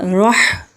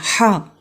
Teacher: ہا جو ہے یہ حلق کے بیچ والے حصے سے ادا ہوتا ہے